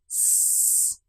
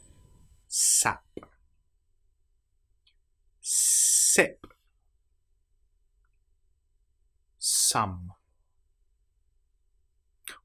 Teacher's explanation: Teeth close together, air being pushed through S, and the tongue quite close behind the teeth. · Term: S sound